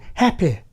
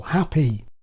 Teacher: In old RP this was the KIT vowel, as in hæpɪ, but in modern posh, as in SSB, it's the FLEECE vowel, hapɪj. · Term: happY vowel